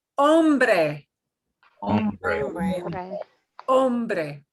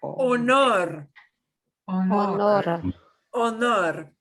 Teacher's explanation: H, but it makes no sound at all